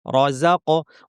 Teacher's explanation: ওয়া মিম্মা রাযাকনাহুম কফ সাকিন আছে, কলকলা করতে হবে, একটু ধাক্কা দিতে হবে। রাযাক র ভারী, যা পাতলা, কফ ভারী।